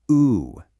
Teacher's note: It just shifted all the way to the back of your tongue. You literally just went from a front vowel to a back vowel.